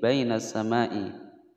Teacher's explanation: Nah lain atau Line karena Dayak sukun sebelumnya fakta Baina sama mad wajib muttasil dibaca panjang lima ketukan